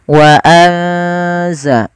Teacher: ikhfa itu membaca di antara keduanya, yaitu dia menyamarkan saja, menyamarkan suaranya kepada huruf zai